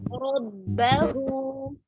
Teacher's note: इसमें रा तो पुर है लेकिन बा को मोटा नहीं करेंगे